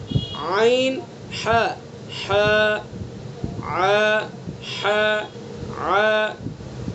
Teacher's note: عین ح حلق کے بیچ سے ادا کریں گے دونوں حروف کو